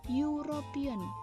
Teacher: Yang tadinya huruf awalnya E berubah menjadi huruf awalnya Y